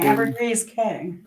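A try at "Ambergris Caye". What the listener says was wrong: It's Key. It's spelled K, but it's pronounced Key. it's pronounced like it's pronounced Key.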